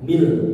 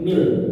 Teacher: Jadi mil ladunka, mil ya. Jadi bukannya min ladunka tapi mil melebur masuk. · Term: idgham bi ghairi gunnah